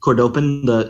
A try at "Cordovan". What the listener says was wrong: Cordovan. I think we established this with Gold Star, but it's Cordovan, not Cordopan.